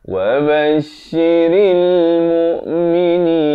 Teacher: Ra baris kasrah bunyi ri, bukan bunyi re. Jadi bila bertemu lam jadi ril.